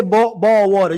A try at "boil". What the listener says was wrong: Boil. boil. It's boil. It's B-O-Y. It's not ball. It's boil.